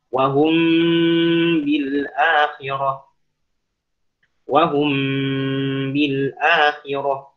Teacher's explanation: Kenapa dinamakan syafawi karena dia bertemu suatu huruf yang ada di syafawi yaitu di antara dua bibir